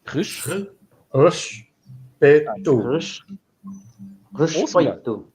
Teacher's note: We're starting with the guttural R again. So when we get an R at the start of a word, it's a guttural R always. Right. So rish, soft E, and that sound that you're not used to doing, that almost shushing sound.